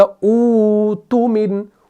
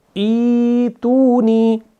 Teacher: آپ نے اس حمزہ کو ختم کر کے اس کے اندر آپ نے مد والا ساؤنڈ لانا ہے، یعنی واو مدہ، یا مدہ اور یا مدہ.